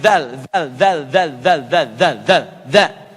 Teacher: Za harfun lithawi, lithawi. Lidahnya digigit sedikit.